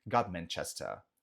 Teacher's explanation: só para pegar a tônica, ela tá no final. Chester, tá?